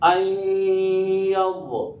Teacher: نون کا یا میں ادغام ہوا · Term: ادغام مع الغنہ